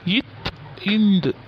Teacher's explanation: இத் இந்த் ஆகிய எழுத்துக்கள் மேல்வாய்ப்பல்லின் அடியை நாவினது நுனி பொருந்த பிறக்கும்.